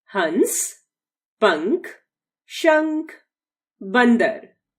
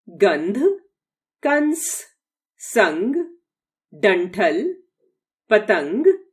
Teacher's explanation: इसका उच्चारण स्वतंत्र रूप से नहीं होता, अपितु जिस वर्ण के साथ प्रयुक्त होता है उसके अंत में नासिका से होता है। अनुस्वार का उच्चारण करते समय गले से आने वाली वायु नासिका मार्ग से बाहर निकलती है।